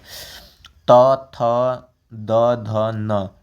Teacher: दंत मतलब दांत से आपका जीभ सट रहा है